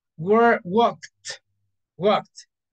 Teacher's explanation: work doesn't vibrate here work so we are going to say worked with a t sound